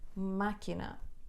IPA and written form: makinɐ (máquina)